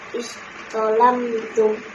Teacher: Huruf dal dilemburkan ke dalam huruf za sehingga bacaan yang terdengar adalah huruf za dengan sifat tebalnya, sementara huruf dal tidak terdengar